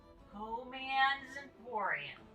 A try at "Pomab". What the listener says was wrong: Pomab. No, not even close. Pomab with a B. No. Pomab.